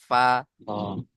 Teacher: নিচের ঠোঁটের ভিজে অংশ এবং সামনের উপরের দুই দাঁতের আগার সাথে লেগে উচ্চারণ হবে ফা